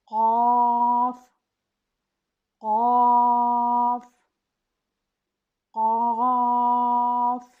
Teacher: حروف لاہویہ یا حروف لہاتیہ یہ لہات حلق کے کبے کو کہتے ہیں، اور جو حروف یہاں سے ادا ہوتے ہیں انہیں حروف لاہویہ یا لہاتیہ کہا جاتا ہے۔ قاف زبان کی جڑ جب تالو کے نرم حصہ سے ٹکراتی ہے تو اس حرف کی ادائیگی ہوتی ہے۔ یہ تفخیم سے پڑھا جانے والا حرف ہے، اس لیے اسے مفخم حرف کہتے ہیں۔